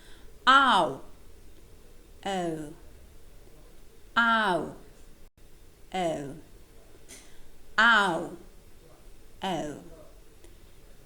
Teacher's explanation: they're called back diphthongs because the second element they have in common is the vowel o, the back vowel o